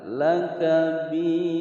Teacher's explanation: ada ra berharokat fathah, ra tafkhim dibaca tebal